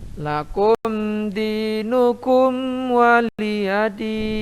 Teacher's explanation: Nah, biasa saja karena di sana ada izhar safawi. Kum di mim sukun bertemu dengan dal dan mim sukun bertemu dengan waw, dibaca izhar safawi, dibaca jelas